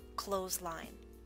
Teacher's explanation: in this word we always drop the th sound